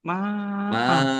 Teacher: Fathah tanwin kalau berhenti ini dibaca fathah dan tidak panjang.